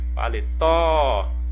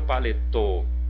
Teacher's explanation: Paletó. Tem um som aberto. Eu não falo paletô, né? Eu não digo assim paletô.